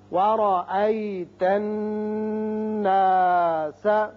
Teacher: را کے اوپر زبر ہے، جب زبر ہو تو را پر پڑھتے ہیں